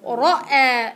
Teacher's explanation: الراء مفخمة والهمز مرققة